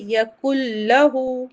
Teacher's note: الٹا پیش آ رہا ہے ہاں پہ، اسے 2 حرکت کھینچ کے پڑھیں گے